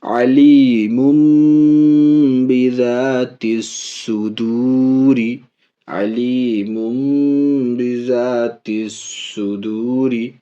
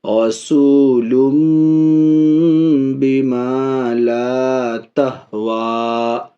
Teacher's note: اس نون کو میم سے بدل کر غنہ اور اخفا کے ساتھ پڑھتے ہیں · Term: اقلاب